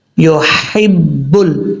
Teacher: جب یہاں پہ رکیں گے، سٹاپ کریں گے تو دال ساکن ہو جائے گا. یا کے بعد ہا بریک ہے، اس ہا کو بھاری ساؤنڈ کے ساتھ نہیں پڑھنا